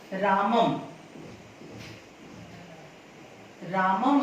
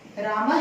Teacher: अनुस्वर का उच्चारण म होता है और विसर्ग का उच्चारण ह होता है